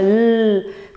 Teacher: le bout de la langue touche le palais eu l'air passe de chaque côté de la langue alors faire · la langue le bout de la langue touche le palais eu l'air passe de chaque côté de la langue